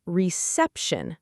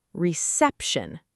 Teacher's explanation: And then I realized, in English, it's reception. The stress is on the second syllable.